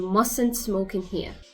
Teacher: For must not, it will be mustn't. You see, the first T is silent.